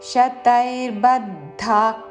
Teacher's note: ఈ పదంలో తాళవ్యశాలతో ఆశా పాశ శతై తా ఐత్వంతో శతై శతై పక్కన రాకి భావత్తు శతైర్బద్ధాక్ దాకి మహాప్రాణాక్షము ధావత్తు. విసర్గ తర్వాత కాతో పదము మొదలైనది కాబట్టి శ్వాస వదులుతూ చివరిన ఖ లాగా ఉచ్చారణ.